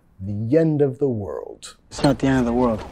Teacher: vinculando, metiendo sonido Y ahí